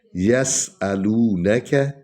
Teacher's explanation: سین سیٹی کی آواز نکلنی ہے